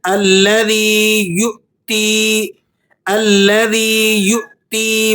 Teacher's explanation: لا يصلاها إلا الأشقى الذي كذب وتولى وسيجنبها الأتقى الذي يؤتي ماله يتزكى الذي يؤتي واؤ کے اوپر حمزہ لگا ہوا ہے، تو یا کو جب آپ حمزہ کے ساتھ جوائنٹ کریں گے، ملائیں گے، تو یہاں ایک جھٹکا آپ نے دینا ہے، کیونکہ حمزہ کا یہ ضابطہ اور قانون ہے کہ جب یہ کسی حرف کے ساتھ ملتا ہے تو وہاں جھٹکے کی آواز پیدا ہوتی ہے، ایک جرکنگ ساؤنڈ کریٹ کرتا ہے۔